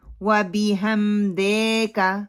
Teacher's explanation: دے کو لمبا نہیں کرنا، کاف کو لمبا نہیں کرنا، اور وا کو راؤنڈ اپنے لپس کرنے ہیں.